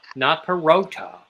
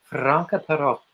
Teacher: They mistake double consonants. They think they have to like really hit the double consonants hard, but you don't really have to. You just spend a millisecond longer there.